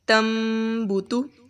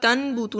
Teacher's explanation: نون کی آواز کو ہم نے میم کے ساتھ بدل دینا ہے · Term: اقلاب